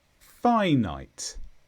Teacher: finite this is an adjective and the stress is on Phi